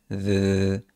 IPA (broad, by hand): ð